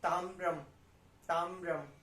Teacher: म भी लास्ट वाला पूरा नहीं है, तो इसलिए उसकी जो साउंड है वो अंदर ही अंदर आएगी